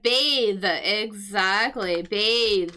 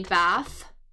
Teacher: So, we got like that th it is a voiced th b voiced th as opposed to the noun the bath tub or we might say to take a bath. the unvoiced th